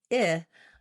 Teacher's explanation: When I say /ɪ/, I want to have a little bit lower and it has that lax sound.